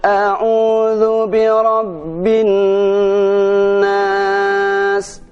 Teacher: tiga ketukan Contohkan Hai full auzubirobinas Nah pada bacaan binnas inilah pada huruf nun itu harus ditahan sampai 3 harokat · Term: dengung